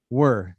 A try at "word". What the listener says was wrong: Now just put a D. Word. Yeah. So that's the pronunciation of word.